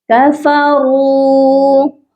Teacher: را heavy letter ہے، اس کو ہم موٹا کر کے پڑھیں گے